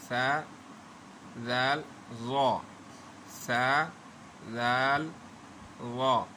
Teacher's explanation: ये ज़बान की नोक और सामने वाले दांतों के किनारों से अदा होते हैं। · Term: नरम हरूफ